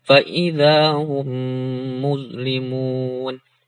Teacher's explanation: Ini ada mim sukun atau mim mati ketemu huruf mim. Nah, dibacanya hanya tinggal dibaca 2 harokat, ditasdidkan, langsung dimasukkan ke huruf mim berikutnya. Ditahan selama 2 harokat. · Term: idgham mimi